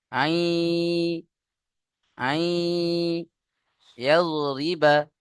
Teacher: নুন সাকিনকে ইয়ার সাথে মিলিয়ে একালিফ গুণনা করে পড়তে হবে